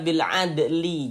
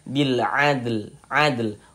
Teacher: Huruf dalnya pantulkan dulu, baru ditambah huruf lamnya. Bil adl, seperti itu.